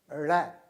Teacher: जीभ को पीछे तालू से सटाकर आप रगड़ते हुए आगे लाते हैं